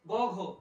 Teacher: বর্গের তৃতীয় ও চতুর্থ এরা গাম্ভীর্যতা আছে, তাই এরা গাম্ভীর্যপূর্ণ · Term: ঘোষ